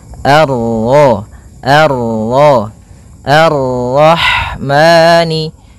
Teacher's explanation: Al sebagaimana yang di atas Al kemudian ini bertemu dengan huruf ro yang berharakat tasydid maka rnya kita baca dengan tafkhim